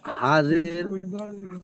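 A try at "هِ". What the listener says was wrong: হা জের নয়, খাড়া জের, এটা কি রয়েছে? হা খাড়া জের কি বলছেন আপনি? তাহলে একসঙ্গে কি হচ্ছে? কি হচ্ছে একসঙ্গে?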